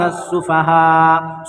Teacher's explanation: یہاں پر دیکھیے حمزہ ساکنہ، پہلی بات تو حروف مدہ کے بعد حمزہ اسی کلمے میں ہے تو مد متصل ہو جائے گا